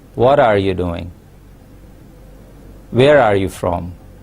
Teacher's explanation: for WH questions we have a falling tone · we start with a high-pitched sound and we end it with a low note